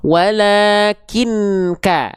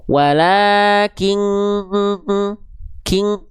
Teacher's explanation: Jadi uj bunyiannya bunyiannya udah enggak jelas, enggak nempel lagi. Nah, ketika disamarkan itu suaranya harus ke hidung, harus sengau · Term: ikhfa hakiki